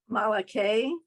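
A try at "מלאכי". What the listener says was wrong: Okay, the first one, remember it's a ch sound, so it's malache, if you can do it. Malache, yeah.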